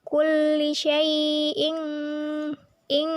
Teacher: Kulli syai'in ing merupakan ifa ab'ad karena huruf hamzah berharokat kasroh tanwin bertemu huruf qaf. Cara membacanya samar dengan dengung dan ditahan selama 3 harokat. Cara pengucapan seperti bunyi ang.